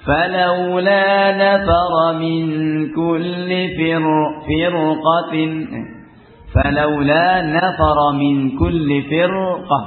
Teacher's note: Tapi pada firqah ra disukun sebelumnya kasrah dan sesudahnya qaf huruf isti'la, maka dibaca tebal. فلولا نفر من كل فرقة فلولا نفر من كل فرقة, bukan firqah ya.